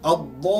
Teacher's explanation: Mad ini terjadi apabila huruf mad bertemu dengan huruf berbaris syiddah ataupun syaddah dalam perkataan. Sebutan huruf selepas huruf mad tersebut diidghamkan. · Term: mad lazim kalimi musaqqal